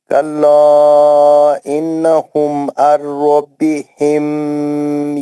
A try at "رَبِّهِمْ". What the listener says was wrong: मीम के बाद आपको इजहारी शफी है, बिल्कुल भी नहीं खींचना है. मीम साकिन के बाद रब्बिहिम नहीं है, हाँ, बस इजहार करना है ना. इजहारी शफी है.